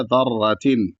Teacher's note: را کو موٹا پڑھیں گے اور یہاں پر تا کو بھی پتلا پڑھیں گے